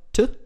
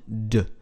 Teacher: In Zeile 2 zum Beispiel wird durch das Anfügen eines zweiten Bogens Stimme verliehen. Das stimmlose dentale t wird zum stimmhaften dentalen d